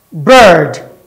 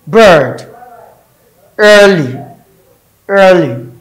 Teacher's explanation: It's a central long vowel.